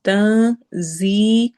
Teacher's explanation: ایک ہوتا ہے تا، تو ہم نے آواز کو چھپانا ہے، زی زا میں سٹی والی آواز ہوگی اور یا مدہ کے ساتھ پڑھنا ہے